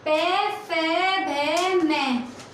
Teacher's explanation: ये ओष्ठी होते हैं, यानी कि ये होठों से बोले जाते हैं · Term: पे वर्ग